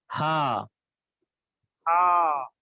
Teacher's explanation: حلق کے نیچے والے حصے سے ادا ہوتا ہے